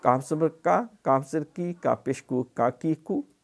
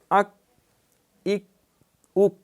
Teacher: زبان کی جڑ اوپر کا تالو، لیکن ذرا منہ کی طرف ہٹ کر یہاں سے کاف ادا ہوتا ہے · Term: چھوٹا کاف